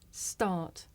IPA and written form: stɑːt (start)